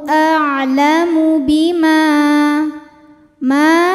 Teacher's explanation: ma hukumnya Mad Thobi'i dahiri sebab ada Alif didahului harakat fathah maka mim panjang dua harakat